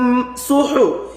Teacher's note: এই হা হরফটা গলার মাঝখান থেকে উচ্চারণ হবে চাপ দিয়া।